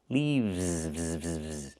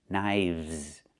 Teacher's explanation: We use the letter V and pronounce it v, plus the S, making a Z sound like in zebra.